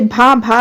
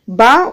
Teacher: भा भी ओट है लेकिन यह महाप्राण है ब ओष्ठ है अल्पप्राण है